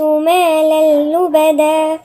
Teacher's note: مالا تنوين وبعديها اللام. هنا طبعا اللام من الحروف الاستثناء مفيش غنة، إدغام. ندغم التنوين في الايه اللي هو اللام في اللام التانية، يبقى بقت لام واحدة.